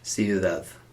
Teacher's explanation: that last d, it's not a hard d, it's not dad, it tends to be more like dadth, almost like a th, like a th sound. Ciudad. Like people from Madrid don't say Madrid, they say Madrid.